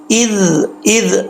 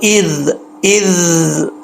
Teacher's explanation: زبان کی نوک اوپر والے دانتوں کے کنارے سے لگے گی تو یہ زال پڑھا جائے گا